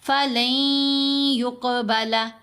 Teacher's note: آواز کو لمبا کیا، یہ آواز ناک سے آ رہی ہے، جتنا کھینچیں گے 2 حرکات کی مقدار غنہ کی مقدار ہے